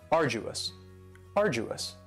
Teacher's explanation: Now you don't hear that D sound that much. It's not very strong. It almost sounds a little like a J.